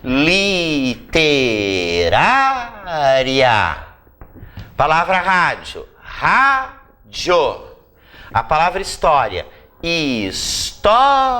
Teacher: elas são todas paroxítonas. E todas terminam em ditongo, porque eu tenho vogais aqui na mesma sílaba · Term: paroxítonas terminadas em ditongo